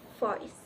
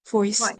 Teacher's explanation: And finally is substitution of V sounds with F sounds. In Bahasa Indonesia, the V sound does not exist, so it is often replaced with the F sound.